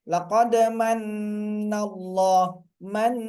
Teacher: Sama dengan man, misalnya laqad manallah, man, tahan, man, n-nya itu, double n-nya itu keluar dari hidung. Cobalah tutup hidungnya, nggak bisa lagi. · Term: guna